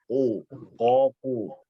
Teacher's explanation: Ya, hanya berbeda bibir saja. Kita tetap baca ko, tapi bibir dimonyongkan.